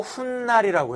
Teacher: 뒷말의 첫소리 모음 앞에서라고 하면 안 되고 니은 앞에서 니은 발음이 생겨난 경우죠